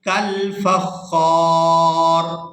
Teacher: وقف کی صورت میں را جو ہے یہ ساکن ہو جائے گی، خا کو کھینچتے ہوئے را ساکن کے ساتھ ملائیں گے